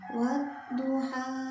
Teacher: Karena di depannya ini ada huruf asyamsiyah, jadi huruf lamnya ini tidak terbaca, dileburkan ke huruf dotnya. Wadduha, lamnya tidak terlihat, alif lamnya. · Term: bacaan asyamsiyah